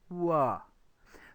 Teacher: The W sound, wa, starts off in a very similar way to oo and then relaxes towards the middle of the mouth